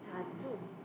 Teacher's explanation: two syllables of which the first is less heavily stressed than the second